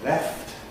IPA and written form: left (left)